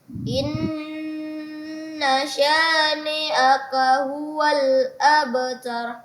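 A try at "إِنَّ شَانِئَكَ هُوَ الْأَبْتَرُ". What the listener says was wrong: Iya, abtar, ra ditebalkan lagi. Abtar. Tinggal lagi menebalkan huruf-huruf yang tebal seperti huruf ra yang ada di akhir-akhir kalimat.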